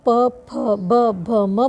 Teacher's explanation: जब आप प फ ब भ म बोलते हैं तो ओठ आपके दोनों स्पर्श होते हैं